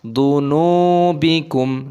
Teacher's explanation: nunnya panjang, wawu sukun matobi'i dua ketukan, jangan panjang-panjang.